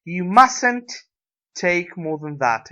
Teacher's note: Again, the stress is on the word mustn't, right? The main verb, as I said, is stressed in a positive sentences, right?